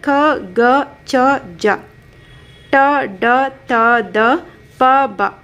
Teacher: ಕಡಿಮೆ ಉಸಿರಿನಿಂದ ಉಚ್ಚಾರ ಮಾಡಲಾಗುವ ಅಕ್ಷರಗಳು ಒಟ್ಟು 10 ಅಕ್ಷರಗಳಿದಾವೆ. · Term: ಅಲ್ಪ ಪ್ರಾಣ ಅಕ್ಷರಗಳು